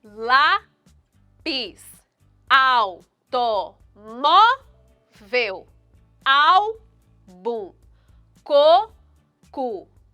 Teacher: a sílaba tônica de todas essas palavras que acabei de ler elas estão na penúltima sílaba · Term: paroxítonas